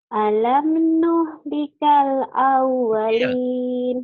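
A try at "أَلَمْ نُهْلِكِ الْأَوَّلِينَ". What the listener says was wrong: Nuhlikil bukan nuhlikal, nuhlikil. Alam nuhlikil awwalin. Alam nuh likil awalin.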